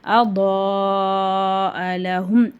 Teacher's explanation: பெரிய மத் இருக்கு அஞ்சுல இருந்து ஏழு அலிஃப் வரைக்கும் நம்ம நல்லா நீட்டி ஊதணும்